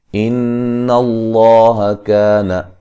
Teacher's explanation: لفظ اللہ کو موٹا ادا کریں گے، اس سے پہلے حرف پر زبر ہے، کا الف مدہ ہے، توا تا کو واو سے جو ہے وہ سختی سے ملائیں گے، واو کو نرم ادا کریں گے، ٹھیک ہے.